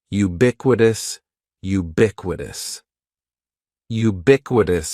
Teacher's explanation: syllable is just like you're saying the letter U ubiquitous and the stress is going to be on that second syllable